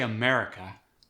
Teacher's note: when I say America the stress tends to go on the May portion